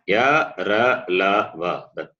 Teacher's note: all the semi-vowels, ya, ra, la, va, they are soft consonants and alpa prana, non-aspirate.